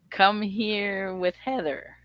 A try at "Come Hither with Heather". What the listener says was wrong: No, not quite. It's come hither. Come hither. The old-fashioned word for here. Come hither with Heather.